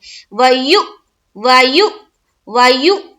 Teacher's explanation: یہاں پر حمزہ ساکینہ کا جھٹکا ہوگا